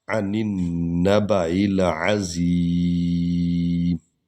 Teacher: عن النبع العظیم، عین کو حلق سے نکالنا ہے، نون کو نون میں ہم ملائیں گے۔ الف لام نہیں پڑھنا کیونکہ اگلے جو نون ہے اس پر شد ہے، تو الف لام سے آگے جو حرف ہو اس پر شد ہو تو الف لام نہیں پڑھا جاتا۔